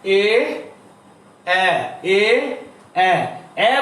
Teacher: এ এ বলার সময় আবার একটু ঠোঁট প্রসারিত হচ্ছে, এই জন্য এটাকে বলা হচ্ছে বিবৃত।